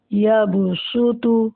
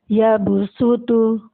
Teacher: صاد کو بھاری پڑھا جاتا ہے جبکہ سین کو باریک پڑھا جاتا ہے